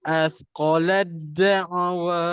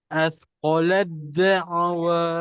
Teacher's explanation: da dengan Ta makrajnya sama hujung lidah ke antara gusi dan gigi atas